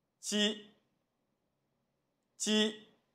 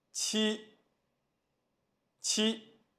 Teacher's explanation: 位置和方法都是相同的。我们在发音前，先将舌尖抵住下门齿背下方，舌面中前部贴近硬腭的中前部，构成阻碍。发音的瞬间解除阻碍，在舌面和硬腭之间保持适度的空隙，使气流从间隙中透出，发出声音。鸡、鸡、七、七。这组音不同之处， 只是在发七的时候，我们的气流会更强一些